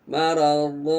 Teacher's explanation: kalau gerak mulutnya atau bibirnya terlihat ya, maradhu, nah, dia tidak terkatup. Kalau maradhum begini, maradhum, coba nanti di cermin, begitu dia mengatup maka yang keluar bunyi mim sebenarnya itu.